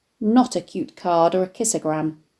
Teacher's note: The alliteration of the k sounds in cute card and kissogram, the harsh guttural sound of which is picked up in the g of gram in kissogram